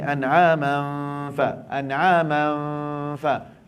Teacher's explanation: Hidung dengung, mulut ambil fa.